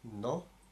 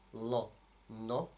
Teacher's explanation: when it vibrates it's no and when it doesn't vibrate it's lo